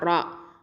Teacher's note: ரா அப்படிங்கிறது வந்து உங்களுக்கு தெரியும் தரஃபுல் லிசான் எழுத்து, ஹெவியாக ஓதணும், தஃப்ஹீம் இது